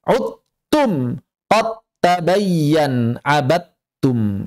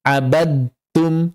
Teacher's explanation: Kalau idgham kamil dalam mushaf Madinah itu selalu seperti itu. Jadi kalau ada huruf dal bertemu ta langsung ucapkan tnya secara sempurna hilangkan dalnya 100%